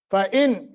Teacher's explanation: فَإِن یہاں اظہار ہوگا چونکہ آگے حمزہ حروف حلقی میں سے